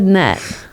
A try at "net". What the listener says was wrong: When you say it, it sounds like nut.